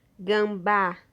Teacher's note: a sílaba mais forte sílaba tônica é a última sílaba